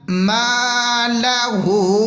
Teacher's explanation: میم کو تھوڑا سا کھینچ کے پڑھیں گے الف مدہ کی وجہ سے